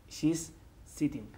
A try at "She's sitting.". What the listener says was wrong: Casi oigo un taco ahí. Okay, so be very careful. Ten mucho cuidado con la palabra sitting. Sitting es una S como serpiente. We don't put E delante, la E fantasma, lo que llamo yo.